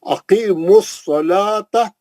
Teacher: अकीमुस सलाता, स्वाद मोटा पढ़ेंगे, मुस्तालिया का है, लाम पे खड़ा ज़बर है, अकीमुस सलाता, सलाता वाव नहीं पढ़ेंगे, फिर लाम के बाद का वाव भी साकिन है, सलावाता नहीं हो, सलाता है, वाव साइलेंट है, नहीं पढ़ेंगे।